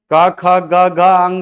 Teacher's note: क ख ग घ अंग सब कंठ से